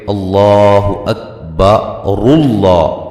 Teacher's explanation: یہ جو حمزہ وصلی ہے یہ درمیان میں سے گر جائے گا